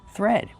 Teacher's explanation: Thread. We have the th making the voiceless sound th with air plus the r th. Be careful not th but thread plus the vowel e like red and bed. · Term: voiceless sound with air